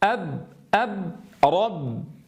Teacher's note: تجاورت معنا في هذه الآية الراء المفخمة مع الباء المرققة